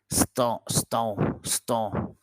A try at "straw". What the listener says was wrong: It's not stall. Remember the sound of R. What's the sound of letter R? Straw. St.